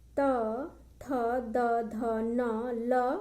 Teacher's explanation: इनका उच्चारण स्थान है दंत। वर्ण के नाम है दंत्य।